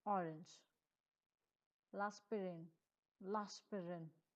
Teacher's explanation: Notice how I slide the L sound right into the next word.